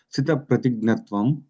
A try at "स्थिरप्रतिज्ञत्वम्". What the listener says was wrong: Sthira, and you said sthita. Sthita is one who is situated in prajna. Sthira is one who is firm in prajna. Sthira pratignyatvam avekshya harshitaha.